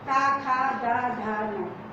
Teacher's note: ये दांत के पास से, जीभ दांत के पास लगे हुए